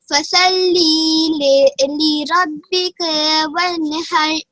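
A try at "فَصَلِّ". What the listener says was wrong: फसल्ले नहीं पढ़ेंगे, फसल्ली, सात को मोटा पढ़ा जाएगा, फसल्ली, फसल्ली लिरब्बिका, रा को मोटा पढ़ा जाएगा, लिरब्बिका वन्हर।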